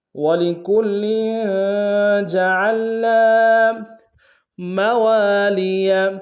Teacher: وَلِكُلٍّ میں کاف کو لام کے سامنے لانا ہے، لام کے اوپر تشدید زور دیں گے اور لام کے نیچے تنوین ہے غنہ کریں گے۔ جعلنا عین کو گہرائی سے ادا کریں گے، نون کے ساتھ الف مدہ ایک انداز میں کھینچیں گے۔